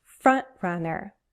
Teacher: I'm not dropping my T, I'm using a glottal stop.